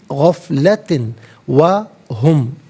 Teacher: غفلتن میں تا کے نیچے دو زیر کی تنوین ہے، اسے واو کے ساتھ ملا کر واو کی آواز کو ادا کیا جائے گا۔ یرملون کا قاعدہ یہاں پر اپلائی ہوگا۔